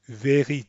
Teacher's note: the r shouldn't be a slow build up to the r like we have in English it shouldn't be very see I'm building up to the r